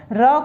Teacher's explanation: र को प्रकंपित वर्ण माना गया है क्योंकि र के उच्चारण में जिह्वा को अधिक संघर्ष करना पड़ता है, अधिक कंपन महसूस करना पड़ता है, इसलिए इसे प्रकंपित वर्ण माना गया है।